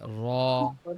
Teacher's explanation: রটা একটু কাঁপে জিহ্বা, র বলতে সময় জিহ্বাটা একটু কাঁপে